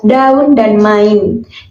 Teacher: masing-masing mendapat tekanan yang hampir sama dan membentuk suku kata tersendiri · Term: bukan diftong